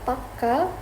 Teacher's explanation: while pakka with a longer K means firm. This longer sound is called a geminate, and it lasts about twice as long as a normal one or singleton.